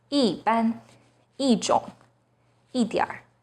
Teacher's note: When 一 is followed by a 4th tone, it changes to the 2nd tone, 一 样, 一 定, 一 次. When 一 is followed by a non-4th tone, it becomes the 4th tone